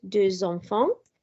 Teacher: Here we have deux enfants, so the X changes to a Z sound, deux enfants. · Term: liaison